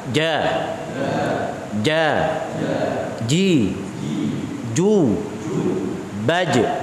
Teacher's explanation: Tengah lidah bertemu dengan Tengah langit-langit mulut bagian atas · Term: Jim